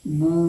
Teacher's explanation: वाव मद्दा को एक अलिफ के बराबर खींचकर अदा करेंगे